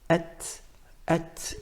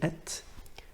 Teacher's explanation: There's a bit of wind that comes out from the mouth when we say at.